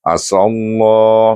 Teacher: Idram syamsikan dulu dan baca dengan tebal kerana sin berbaris alif